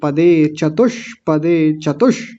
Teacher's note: मूर्धन्य शकार की आवाज स्पष्ट दिखनी चाहिए